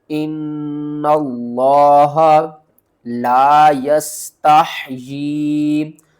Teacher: اس نون کو لفظ اللہ کے لام سے ملائیں گے، لفظ اللہ سے پہلے زبر ہے، اس کو موٹا کر کے پڑھیں گے۔